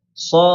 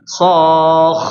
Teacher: Rakhawah, maka mengalirnya suara, maka jangan ditahan. Jadi dipelongin.